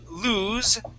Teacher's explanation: lose has a voiced S, that Z sound.